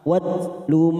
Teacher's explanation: huruf ta sukun mempunyai sifat Hames sama dengan Kaf